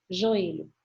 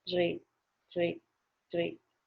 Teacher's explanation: O Ezinho ficou um pouquinho apagado.